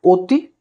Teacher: প্রত্যেক ক্ষেত্রে আমরা অধ্বনির উচ্চারণ বা অ বর্ণের উচ্চারণ আমরা ও ধ্বনি দ্বারা করছি